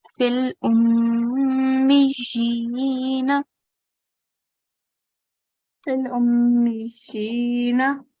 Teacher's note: We have to prolong it. We have to do a 2-second nasal sound. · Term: mim mushaddad